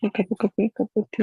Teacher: Es muy común comerse esa V en los of. Por ejemplo, una taza de café.